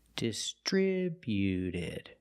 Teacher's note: When we add e d, the t at the end is between vowels. So, it's a fast d, not distributed, but distributed.